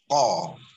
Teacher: Kat mana dia keluar? Kat belakang lah. Dia bukan dekat bahagian halqum dia dekat bahagian lidah. Pangkal lidah. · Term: qaf